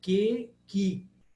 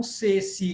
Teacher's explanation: Quando ele se encontra com E ou com I, ele vira que, ki. E não se, si, como em português